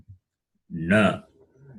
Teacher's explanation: The fifth letter is nasal. It is cerebral plus nasal.